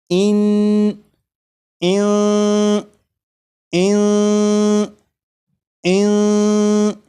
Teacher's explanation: اس طرح پڑھوں گا کہ زبان تالو سے نہیں لگی ہوگی · ये जो आपने पढ़ा इन बिल्कुल इसी तरह पढ़ेंगे, लेकिन एक फ़र्क ये रखेंगे कि अब जो पढ़ना है ज़बान तालू से ना लगे, सिर्फ ज़बान तालू से हटा कर पढ़िएगा। जब आप ज़बान तालू से नहीं लगने देंगे तो फिर यहाँ पर इख्फा हो जाएगा। इख्फा मतलब نون ساکن کی جو آواز ہوگی وہ ناک میں چھپ جائے گی، اس طرح کی اس میں غنہ بھی ہوگا۔ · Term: اخفا